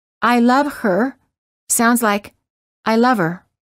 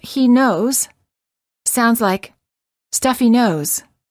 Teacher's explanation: the letter H is often silent in the words he him his her and hers when these pronouns are not the first words of a sentence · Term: silent h